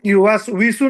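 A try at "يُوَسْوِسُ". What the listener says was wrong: হ্যাঁ ভিসু। হ্যাঁ, অনেকে ইসু পড়ে, কিন্তু ওই ভি আসলে তো ওয়াজের ভি, ওয়াজের ভি।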